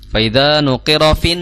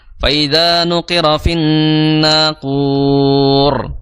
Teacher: cara membaca nun yang bertasydid adalah kita menahannya 2 harokat disertai dengan suara hidung ya, suara gunnah.